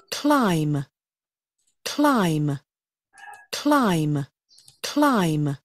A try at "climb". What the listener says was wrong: Climb, từ này tránh trường hợp đọc là climb các bạn nhé. Ở đây thì âm k, k, k, k. Cl, mình cần phải đọc liền hơn, liền mạch ra nào. Cl, cl, cl, cl, cl, climb, climb, âm I'm, chúng ta sẽ mở rộng miệng ra.